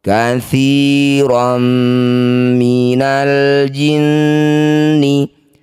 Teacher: Bunyi fathah tanwinnya langsung masukkan pada mim. Bibir rapat dengung dua harakat. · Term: idgham bighunah, idgham bigunah